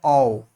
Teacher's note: औ में जो है हम होठों का भी प्रयोग हो रहा है, ओष्ठ का भी और आपके कंठ का भी